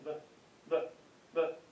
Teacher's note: It's neither a B nor a V. It's a kind of in between. Basically take your bottom lip and just almost touch it to the top lip.